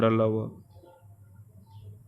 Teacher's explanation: वर्ग और उच्चारण स्थान य तालव्य तालु से, र वर्तस्य दंत मूल और मसूड़े से, ल वर्तस्य दंत मूल तथा मसूड़े से, व दंतोष्ठ ऊपर के दांत प्लस निचला दांत, ये सघोष होते हैं और अल्पप्राण में आते हैं। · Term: अंतस्थ व्यंजन